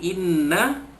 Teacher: Nun sabdu, nun tasydid dibaca dengung dua harakat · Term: wajibul gunnah